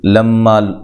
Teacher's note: ہے، فلما جاءہم اچھا جی، لما لام کو موٹا نہیں کرنا، میم مشدد پہ غنہ ضروری ہے ، الف مدہ ہے، جاء یہاں مد واجب ہے، حمزہ کو